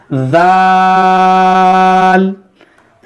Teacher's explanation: زبان کا جو سرا ہوتا ہے آگے کا حصہ اس کو آپ اوپر کے دانت کے اندرونی کنارے پر لگائیں گے تو یہ ذال ادا ہوگا